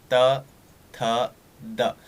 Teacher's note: तो आपकी जो जीभ है ना, जीभ का जो अग्रभाग है ना, वो टच होगा आपके दांतों से। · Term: दंत स्थान